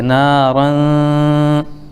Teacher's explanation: میں سے ذال آ رہا ہے اس لیے اخفا ہوگا، یعنی نون کی آواز کو ایک الف کے برابر ناک میں روک کر کے رکھیں